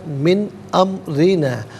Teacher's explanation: را کے نیچے زیر ہے، را کو باریک کر کے پڑھا جائے گا۔